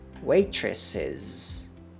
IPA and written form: ˈweɪtrəsɪz (Waitress's)